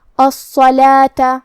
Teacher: صاد پہ تشدید ہے تو ہم دو حرف کے برابر صاد کو پڑھیں گے اور یہ حرف کو بھاری آواز میں بھی پڑھیں گے. لام کے بعد کھڑا زبر ہے تو یہاں مد الف ہے. · لام کے بعد کھڑا زبر ہے تو یہاں مد الف ہے. ہم اپنی آواز دو مد کے برابر لمبی کریں گے اور حرف الواو کو ظاہر نہیں کریں گے.